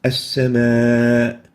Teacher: And since they are both in the same word, we name this as an attached mad because both the hamza and the vowel are attached within a single word. And we extend this a for more than 2 units. That's why it's a secondary mad.